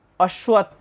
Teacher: ত যোগথ এখানে তাহলে ত এর উচ্চারণটা অর্ধেক হবে